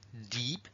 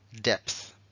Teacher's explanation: se pronuncia Deep una y larga mientras que esta y que se ha quedado solita va a ser depth